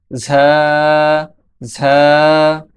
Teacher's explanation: ঝা ঝা ঝায়ের মাখরাজ হচ্ছে জিহ্বার আগা সামনের নিচের দুই দাঁতের পেট ও আগার সঙ্গে লাগিয়ে উচ্চারিত হয়। ঝা জিহ্বার আগা যখন সামনের নিচের দুই দাঁতের পেট, এই যে দুইটা দাঁত আছে ও দুইটা দাঁতের পেট এবং আগার সঙ্গে লাগবে তখন ঝা উচ্চারিত হবে।